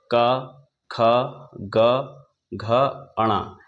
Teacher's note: तो सबसे पहले हम देखेंगे, पहला वर्ग आता है कंठ, और इस कंठ का उच्चारण स्थान है कंठ। इसमें क, ख, ग, घ, अणा, यानी इन सभी व्यंजनों का उच्चारण स्थान कंठ होगा।